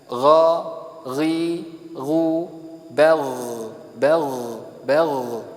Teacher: perhatikan ghain tetap suara mengalir, tidak tertahan sebagaimana bak